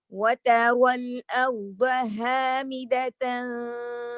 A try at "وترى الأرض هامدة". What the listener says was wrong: No, keep the dad heavy all the way. Keep the dad heavy all the way. الأرض ها.